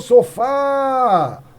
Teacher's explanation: a sílaba forte é o fá